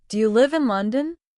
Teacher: My voice rises at the end, especially on the word London. That rising sound signals I am asking a question and that I'm expecting an answer.